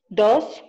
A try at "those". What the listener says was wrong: No dos. Those. La lengua al frente de los dientes.